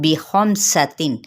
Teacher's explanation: خا حروف متعالیہ میں سے ہے، میم کے ساتھ ملائیں گے، سین پہ سیٹی کو واضح کریں گے، لیکن ان حرکات کو لمبا نہیں کرنا